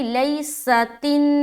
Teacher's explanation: سین میں سیٹی کی آواز آئے گی